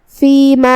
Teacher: کلمت فیما یہاں میم پہ زبر ہے تو دھیان رہے ہم صرف میم کو زبر سے ادا کریں گے، اپنی آواز لمبی نہیں کریں گے تاکہ مد الف نہ ظاہر ہو